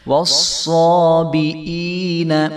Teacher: یا ساکن سے پہلے زیر ہے حمزہ کے نیچے، تو اس کو جو ہے ہم ایک الف برابر لمبا کریں گے